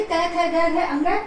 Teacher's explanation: उच्चारण स्थान इनका होता है कंठ, क्योंकि इनका जब हम उच्चारण करते हैं तो श्वास वायु कंठ से स्पर्श करके निकलती है, तो इन्हें हम कंठ्य वर्ण भी कहते हैं।